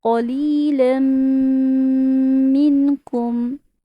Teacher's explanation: दोनों लफ्ज़ों को मिलाएंगे, गुन्ना भी करेंगे। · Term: इदगाम बा गुन्ना